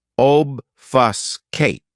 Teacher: This verb has three syllables, and the stress is on that first syllable, obfuscate.